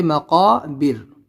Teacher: قاف کو یہاں پر نکالیں گے، بڑا قاف ہے اور را یہاں پر ساکن ہو جائے گی تو اس سے پہلے زیر ہے تو پتلا کریں گے